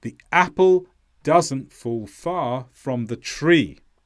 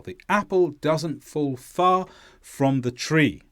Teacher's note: you need to stress apple, does, fall, far, and tree.